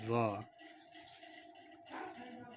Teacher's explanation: ضا کو موٹا کر کے، جیسے سواد پر کر کے پڑھ رہے ہیں اسی طرح سے ضا بولیں گے